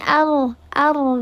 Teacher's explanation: di sini ar ar ar dibacanya tafhim tebal